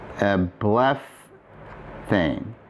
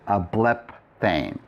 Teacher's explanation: So ἐβλεφθην would be "I was seen." And if I want to write the future passive form for βλεπω, no augment. Instead of the pi, I'm going to aspirate it so it's a phi. βλεφ-- And then I'm going to add the tense formatives plus the connecting vowel and the primary active suffix, or our primary middle suffixes.